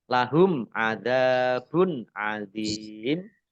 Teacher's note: Dhammah tanwin bertemu dengan huruf ain, bacaan izhar, dibaca jelas.